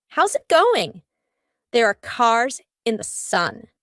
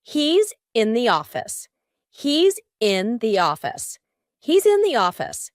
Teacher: Both of these sentences have an S and then a vowel. What happens here? In each of these words, the S becomes a Z. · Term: linking the S plus